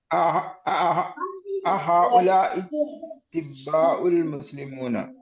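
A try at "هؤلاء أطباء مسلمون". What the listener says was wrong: അല്ലില്ല, മുസ്ലിമൂന അല്ലില്ല. അവിടെ ആൾ കൊടുത്താൽ അർത്ഥം മാറി. മുസ്ലിമൂന. ഹഉലാഇൽ അതിബ്ബാഉ ഹഉലാഇൽ അതിബ്ബാഉ മുസ്ലിമൂന. ഹഉലാഇൽ അതിബ്ബാഉ.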